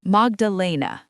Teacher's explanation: The accent is on the third syllable.